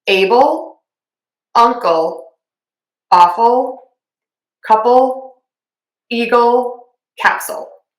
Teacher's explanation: Okay, now this is where you really want to hit the L when we have it at the end of the word and it becomes a syllable because we're going to add and that's basically your tongue moving from low in your mouth to touching where the skin and the teeth meet on the roof of your mouth